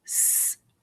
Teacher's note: Do you hear a vowel? I do not hear a vowel. There is no vowel sound in the word search. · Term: R-controlled